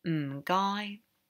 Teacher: So it's quite an easy one to say because it's very distinct. It goes from the low to the high